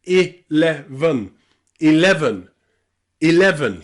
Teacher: Okay, there are 3 ways that we pronounce the letter E in the word 11. You've got I at the beginning, then E in the middle, and then the schwa at the end.